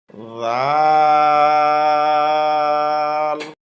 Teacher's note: নরম হবে, জিহ্বার আগা উপরের দাঁতের আগায় লাগবে